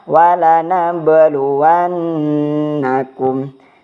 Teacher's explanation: Terus yang kedua itu terdapat pada nun yang bertasydid. Itu adalah hukumnya gunnah, berarti didengungkan selama 2 harokat.